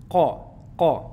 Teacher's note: le qa, c'est pas le ka. Il faut chercher plus loin au fond de la gorge.